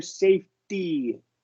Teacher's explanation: The reason it's not a flap T is because it's not between two vowel sounds